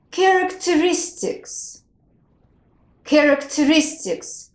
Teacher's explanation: the stress falls on a first and on a fourth syllable so there are two stresses